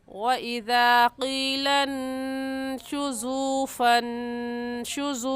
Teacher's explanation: वाव मद्दा को एक अलिफ की मिक़दार खींच कर पढ़ते हैं